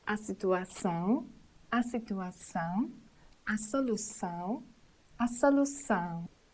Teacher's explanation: terminations ão, ção should be said nasally with the whole termination